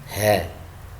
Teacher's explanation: Ha memiliki sifat hams. Ya, hams ini lawannya jahar. Kalau hams nafas berhembus.